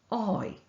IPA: כi